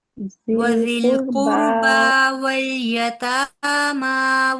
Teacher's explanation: بَنِي إِسْرَائِيلَ لَا تَعْبُدُونَ إِلَّا اللَّهَ وَبِالْوَالِدَيْنِ إِحْسَانًا وَذِي الْقُرْبَى وَالْيَتَامَى وَالْمَسَاكِينِ یہ دیکھیے ادھر پوچھیا قربا کھڑی زبر ہے نا، یتاما کھڑی زبر 2 کاؤنٹ لمبا کریں گے دونوں کے اینڈ کو